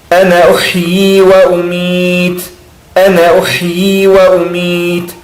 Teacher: Reparem que também eu não pronuncio o alif.